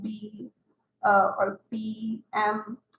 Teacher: We have labial, which is the closure between your two lips.